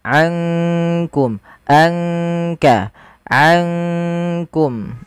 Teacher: Kalau idgham itu memasukkan, sedangkan ikhfa di antara keduanya, di antara izhar ataupun idgham. Maka ankum langsung kepada makhraj disamarkan kepada makhraj kaf.